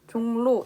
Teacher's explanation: 종로 역시 리을이지만 니은으로 발음이 나고 있습니다